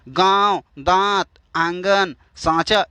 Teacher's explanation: जिस ध्वनि के उच्चारण में जो हवा है ना वह नाक और मुंह दोनों से निकलती है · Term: अनुनासिक